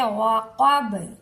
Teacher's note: با حروف قلقلہ میں شامل ہے، جب ہم اسے ساکن کریں گے تو با پر قلقلہ ہوگا